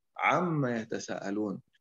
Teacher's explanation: Ain ini dibacakan dari tenggorokan, hadirin. Dari tenggorokan. Bukan dibacakan dari hidung. Jadi tidak boleh ada dengung, ada gunnah saat kita membacakan ain.